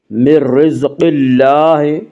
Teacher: من رزق اللہ، را کو باریک پڑھیں گے، من رزق اللہ، قاف کو پر پڑھا جائے گا، قاف حروف مستعلیہ میں سے ہے